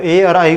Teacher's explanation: कंठ और तालु का जहां दोनों से ही प्रयास जहां लगता है वहां यह उच्चारण ए और आई बोला जाता है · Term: कंठ तालु